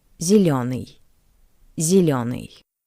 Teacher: The first ye is unstressed. That's why it sounds closer to the soft e.